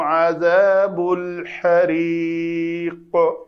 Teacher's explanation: قاف کے نیچے کسرہ ہے، لیکن ہم نے چونکہ یہاں پہ ساکن کرنا تھا تو اس کو قلقلہ کیا۔ ذال کا مخرج نوک لسان دونوں دانتوں کے درمیان آئے۔